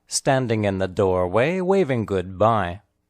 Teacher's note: The emphasized words are standing and doorway.